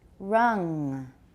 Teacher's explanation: make the vowel longer the final nasal is not very long it's just a little bit of fixed to the end rung